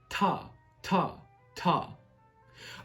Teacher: Now, articulation is as simple as saying ta, where the tongue, almost the tip, but a little bit behind the tip of the tongue, touches the roof of the mouth, where the gum and your top teeth meet